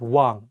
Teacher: you don't pronounce the 이응 at the beginning of the word. Only say the 와 and pronounce the 이응 at the end of the word as ng. So all you need to remember is that if the 이응 is at the beginning of the word, it has no sound.